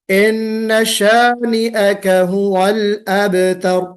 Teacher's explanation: हुवल में वाव को गोल करना है, अब में बा पर कलकला करना है, रा को मोटा पढ़ना है।